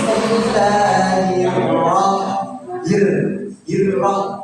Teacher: itu tipis karena apa? Sebelum ra harakatnya kasrah. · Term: ro tipis